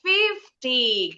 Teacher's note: Kalau 50 ditukar penekanannya, intonasi yang tinggi di depan.